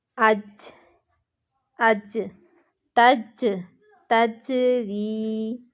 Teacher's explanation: جیم ساکن ہو تو قلقلہ ہوتا ہے، آواز پلٹ کر واپس آتی ہے۔ ری کو ہم نے لمبا کیا کیونکہ یا مدہ ہو رہا ہے، پچھلے قاعدے آپ نے بھولنے نہیں ہیں، تجری۔